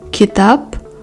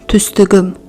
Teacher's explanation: In word endings with the voiceless consonants k, k, p, and a suffix or the ending being with the vowels, the voiceless consonants become their voiced counterparts, i.e. k becomes g, k becomes g, and the p becomes b. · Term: Regressive assimilation